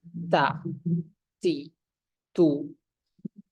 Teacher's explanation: napasnya mengalir tapi suaranya ditahan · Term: hams